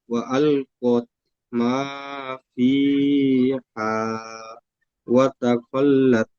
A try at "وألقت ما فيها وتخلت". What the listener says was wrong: সুন্দর পড়েছেন, বানান করবেন।